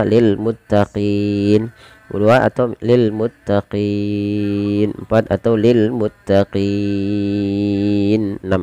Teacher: Maaf, wajib dipanjangkan dulu qinya. Kita boleh memilih antara 2 harokat, 4 harokat atau 6 harokat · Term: mad arid sukun